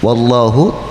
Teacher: Wallahu tabkhim dibaca tebal karena Allah didahului harokat fathah